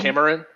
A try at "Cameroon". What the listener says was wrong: Well, the pronunciation is what's throwing me first off, because you're saying Cameron, James Cameron.